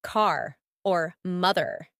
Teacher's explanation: in American English the r is much more pronounced especially at the end of words like car or mother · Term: American R